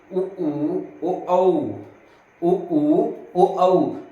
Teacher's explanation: वर्तुल का मतलब होता है क्या भैया, कि गोल, ठीक है। ओष्ठ का गोल हो जाना या ओठ का आपके गोलाकार हो जाना उसी को हम कहेंगे वर्तुल।